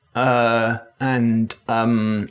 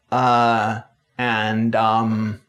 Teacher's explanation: compare the flat mid-central uh and um of rp with the more open fronter uh and um of general american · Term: hesitation sounds